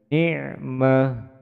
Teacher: kemudian tak marbuto ketika berhenti atau wakaf disukunkan berbunyi huruf H